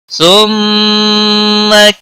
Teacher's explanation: ثم میم مشدد پر غنہ ہوگا